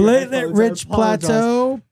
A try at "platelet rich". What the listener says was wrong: You did not rich. Just say platelet rich. That is correct. You said it like Joey from Friends. You threw like a shrug there. You were like, it's like when he's trying to learn French, he's like, shababoo-dabba-ba. Like, you were, you were so confident.